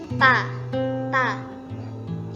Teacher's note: Ta itu bersifat hamas dan syiddah, yaitu suaranya tertahan dan mendesis.